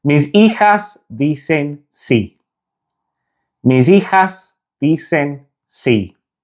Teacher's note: It's very similar, but the Spanish sound is cut short, so it's not a drawn out E sound. The correct pronunciation of the Spanish I is a short E.